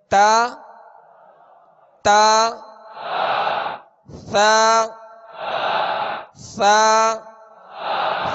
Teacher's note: ता सा सा सा को नरमी के साथ अदा करेंगे और सा का मखर जबान का सिरा ऊपर के सामने वाले जो दो दांत है इसके अंदरूनी किनारे · ता दाल त का एक ही मखर लिखा हुआ है कि जबान की नोक और ऊपर के दांतों की जड़ से अदा होते हैं